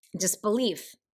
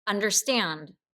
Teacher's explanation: it's two short syllables followed by a long syllable so it's two quick little beats followed by a long beat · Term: anapest